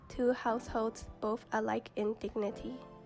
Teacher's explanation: house has a louder and more stressed sound than hold, which has a softer sound and tone overall.